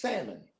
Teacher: It's silent. The L in salmon is silent.